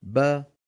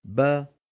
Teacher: با كمان با كمان با شايف كيف الاسان عم تبتعد با الشفتان ابتعادهما يخرج الباء ابتعاد الفكين يخرج الفتحه با نعم فلا بد من ان نقول با ولا نقول ب